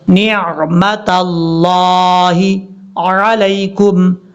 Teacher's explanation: نون کے بعد جو عین ہے اس عین کو پڑھتے ہوئے جھٹکا نہیں دینا